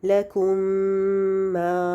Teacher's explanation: हम दूसरे मीम को शद के साथ 2 दफ़ा पढ़ते हैं, यानी शद के साथ गुन्ना के साथ पढ़ते हैं। इसमें भी 2 हरकत गुन्ना होता है। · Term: इदगाम शफ़ी